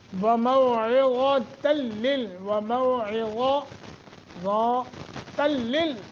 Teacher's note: وموعظۃ وموعظۃ لل، ادغام بلا غنہ، بغیر غنہ ادغام ہوگا. نون تنوین کے بعد لام مشدد ہے، ادغام تو ہو گیا مگر غنہ نہیں ہوگا